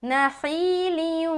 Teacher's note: नखीलियुम, पूरा मुंह गोल, क्योंकि वाव से हम मिला रहे हैं